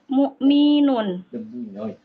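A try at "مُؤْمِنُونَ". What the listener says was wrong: Mi-nya pendek, mu'minun.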